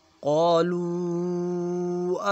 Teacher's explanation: قالو کے اوپر مد آ گئی، اسے 4 الف کے برابر کھینچیں گے · میم کے اوپر جزر ہے، میم ساکن ہے، تو یہاں پہ اخفا کریں گے، میم کی آواز کو ناک میں لے کر جائیں گے